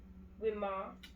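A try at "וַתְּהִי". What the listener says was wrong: You always mess up that letter. Right, it's a tet.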